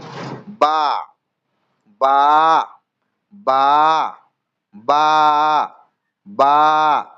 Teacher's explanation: দুই ঠোঁটের শুকনো অংশ মিলিত হয়ে উচ্চারিত হয় বা। 16 নম্বর মাখরাজ আমাদের ঠোঁটের বাইরের অংশ অর্থাৎ শুকনো অংশ মিলিত হয়ে উচ্চারিত হয় বা।